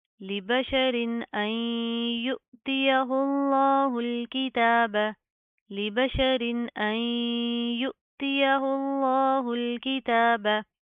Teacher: लफ्ज़ अल्लाह को मोटा पढ़ेंगे